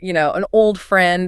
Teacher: the N slides to the O, the ed slides to the F, it becomes an old friend.